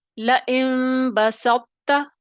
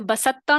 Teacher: طا کی جو تفہیم ہے وہ آپ کو سنائی دینی چاہیے اور آپ نے ادا کرنی ہے. · طا میں پاور ہے، قوی ہے، اور وہ پاور اس کو یعنی تاگ جو ہے باریک حرف اس کو اوور کم نہیں کر سکتا. طا میں زیادہ پاور ہے تو طا کی جو صفت ہے وہ برقرار رہے گی اور ناقص ادغام ہوگا، پورا نہیں ہوگا